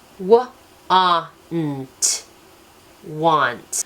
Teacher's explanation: There are the 3 boxes here that show the W, the N, and the T are phonetic. The A does not make the A sound. It says ah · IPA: /w/ /aw/ /n/ /t/